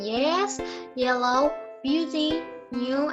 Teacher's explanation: The only palatal sound in English is as in yes, yellow, beauty, new, and it is voice